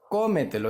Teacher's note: Dividida en sílabas, co-me-te-lo. Entonces, ¿cuál es la mayor fuerza? En la primera O, ¿verdad? En la primera sílaba, que es la antepenúltima sílaba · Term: sobresdrújula